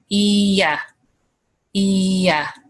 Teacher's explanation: if we go from the sound E to the sound A, we naturally make the Y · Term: intrusive sound